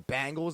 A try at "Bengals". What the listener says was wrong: Bengals. It's B-E.